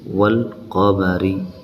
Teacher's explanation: الف اور لام کے بعد قاف جو ہے یہ حروف قمری میں سے ہے، اسی لیے یہاں پر لام پڑھا گیا